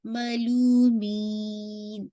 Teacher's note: می کو اسٹریچ کرتے ہوئے نون پہ آپ نے ناقص گنہ کرنا ہے